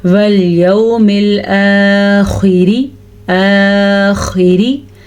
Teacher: اب خا کو ہم نے پر پڑھنا ہے اور را کو ہم نے باریک پڑھنا ہے۔